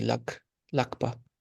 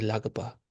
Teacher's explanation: for the ga, whenever it's a secondary suffix, it becomes more of a K sound. Like this should be lakpa.